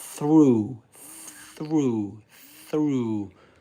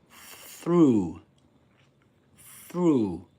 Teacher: Through. There's no vibration in the vocal folds here. So this is the first th sound here is voiceless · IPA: /θ/